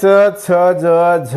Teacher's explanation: आता दंत तालव्य वर्ण, या ठिकाणी तालव्य वर्णामध्ये च छ ज झ आहे, पण हे च छ ज झ म्हणताना जीभ दातांनाही लागते, म्हणून त्यांना दंत्य तालव्य वर्ण असं म्हणतात किंवा दंत तालव्य वर्ण असे म्हणतात.